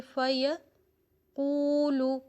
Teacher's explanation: اس میں صفت مستعلیہ ہے، یعنی اس کو موٹا پڑھنا ہے ہم نے